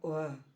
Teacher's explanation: दंत और ओष्ठ से उच्चारण होने वाला वर्ण है व